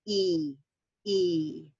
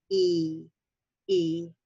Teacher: if you feel your tongue you realize it's forward and it's also nice and tense and toward the top of your mouth